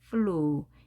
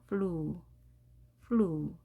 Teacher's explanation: 우 소리 flew. 이때 U 모음이 혼자이지만 길게 소리가 났죠.